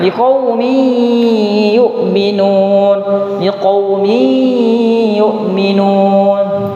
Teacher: Kaidah yang benar ketika tanwin bertemu dengan huruf ya itu diikhfakan sedikit. Tetap dibaca huruf nunnya. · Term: sedikit nun sukunnya